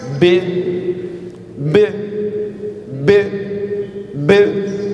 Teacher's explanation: O B tem um ponto de articulação também nos lábios, também é bilabial.